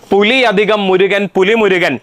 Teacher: രണ്ടാമത്തെ വാക്കിന്റെ ആദ്യത്തെ അക്ഷരം ഏതാ മ എന്ന അനുനാസികമാണ് അതുകൊണ്ട് ഇരട്ടിപ്പ് സംഭവിക്കില്ല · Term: ദ്വിത്വസന്ധി